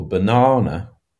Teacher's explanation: banana has stress on the middle syllable